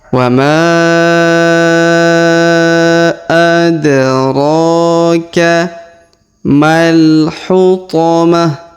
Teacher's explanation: Huruf ro kita panjangkan 2 harokat karena di atasnya terdapat alif kecil